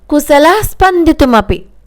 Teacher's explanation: అంటే విసర్గ పైకి మనకి వినిపించకూడదు పక్కా అక్షరంలో కలిసిపోవాలి